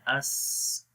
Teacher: سین کے اندر صفت ہمس ہے، اس. سانس جاری ہو رہا ہے، رخاوت آواز بھی جاری ہو رہی ہے